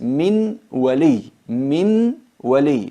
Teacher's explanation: Nun sakina se fusiona en la waw, se convierte en una waw reduplicada, pero mantenemos la característica de la nun, que es al-gunna, la nasalización.